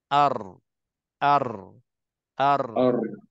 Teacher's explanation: Getaran, gegaran itu akan berlaku pada huruf ra. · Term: sifat takrir